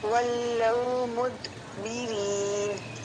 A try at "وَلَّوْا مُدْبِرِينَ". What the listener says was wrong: قلقلہ صحیح سے واضح کریں.